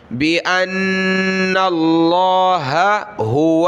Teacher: یہاں لفظ اللہ کی ہا ہے، اس کے بعد دوسری ہا ہے، دو ہا ہیں، دونوں کو ظاہر کرنا ہے